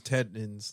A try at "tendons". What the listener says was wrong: Don't you mean tendons? No, you said like tetanus or some shit.